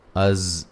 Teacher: زا پہ سیٹی کی آواز سیٹی کی طرح زا کو ادا کریں گے